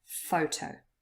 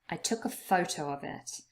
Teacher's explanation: consists of two syllables but only the first one is stressed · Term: word stress